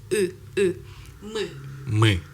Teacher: So you need to kind of like move the E back, and you get U. As long as your tongue is still bunched up, it will be.